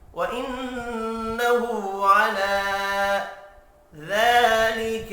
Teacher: علی لام کے اوپر کھڑی زبر ہے، اس کو بھی ایک الف کے برابر کھینچ کر پڑھیں گے